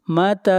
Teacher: تا کو کھینچ کر پڑھیں گے ایک الف کے برابر، مد اصلی ہے